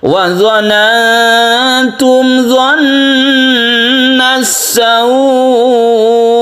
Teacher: Jadi sukun hamzahnya harus jelas ya, huruf hamzah bukan ain. Wa dhanantum dhannas sawu itu kalau waqaf.